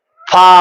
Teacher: फ किस तरह अदा होता है ऊपर के दांतों के किनारे और निचले होठ के तर हिस्से से अदा होता है। जैसे ये है सनाया उलिया ये दो दांत हां हल्का सा इसके साथ बाहरी हिस्से के साथ तर वाले हिस्से के साथ इसको मिला देना है तो फिर फ अदा होता है जैसे फ इस तरह इसको अदा करना है।